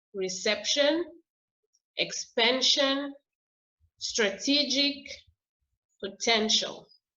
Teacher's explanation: here the stress is in the middle. It's in the middle of the word. It's the second syllable.